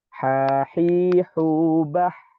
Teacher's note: Makanya huruf H ini berbeda dengan huruf Ain yang sifatnya adalah tawasud dari segi suara, tetapi huruf H ini memiliki sifat rokhawah. Jadi huruf H ini secara sifat suara dia mengalir atau istilahnya adalah rokhawah.